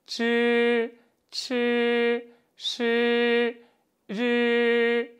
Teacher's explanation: 권설음, 말권, 혀설, 소리음, 혀를 말아서 나는 소리가 이어집니다. 혀를 살짝 말아서 입천장에 갖다 대고요.